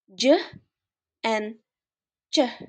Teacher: Begin with the airflow is completely blocked and then releases as a fricative, creating friction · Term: Affricate